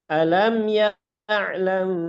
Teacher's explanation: Mim sukun bertemu dengan ba itu difurjahkan.